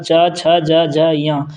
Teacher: इन सभी वर्णों का उच्चारण स्थान तालु है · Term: तालव्य